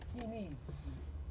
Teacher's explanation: if the S is preceded by a sound called voiced such as the D you notice that it is pronounced as Z so I say he needs though I write S but the